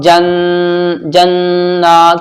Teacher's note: क्यों पढ़ रहा हूँ, क्योंकि नून के ऊपर तशदीद है। जब नून के ऊपर तशदीद होती है तो गुन्ना होता है, नाक में थोड़ी देर आवाज यहां भी रुकेगी